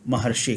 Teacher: महा जो ऋषि, यहाँ पर महा के आ और री के री, इन दोनों को हटा करके एक अर आ जाता है, तो हम इसे महर्षि कहते हैं।